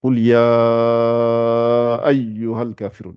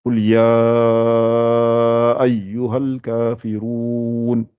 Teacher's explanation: quand c'est long comme ça, il y a un allongement et il y a un Hamza